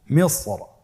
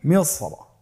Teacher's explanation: কোরআন কারিমের এই শব্দের ক্ষেত্রে র হরফটি মোটা করে পড়তে হবে।